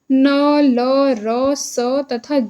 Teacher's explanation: इन व्यंजनों का उच्चारण जिह्वा की नोक के द्वारा वर्त्य को छूकर किया जाता है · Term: वर्त्य व्यंजन